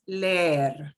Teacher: We pronounce both E's. And the way we pronounce both E's is we just drag it out and make it a little longer.